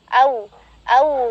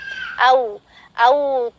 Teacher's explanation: Wow sukun sendiri dengan cara memancungkan kedua bibir secara sempurna